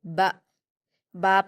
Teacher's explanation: با پر کھڑا زبر ہے تو اس کو ہم الف مدہ کی طرح 2 حرکات کھینچیں گے